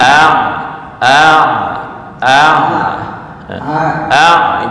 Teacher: makhraj Ain Ain itu di mana Tengah tenggorokan